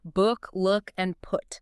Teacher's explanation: the ooh sound where the lips push out tightly like in book look and put.